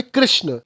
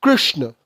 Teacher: संस्कृत में इस मात्रा का उच्चारण ना तो री है और ना ही रूह है it's some where in between